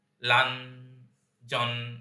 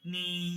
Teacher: আমার নামের ক্ষেত্রে যেটা বলেছিলাম, নি, লান, জন, এখানে লান এবং জন আপনাকে থামিয়ে দিচ্ছে, কিন্তু নি আপনি টেনে যেতে পারেন, নি, লান, জন আটকে দিচ্ছে।